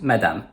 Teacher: Both As sound the same, as /a/.